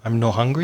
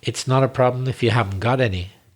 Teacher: So you forget the T. The T disappears on not.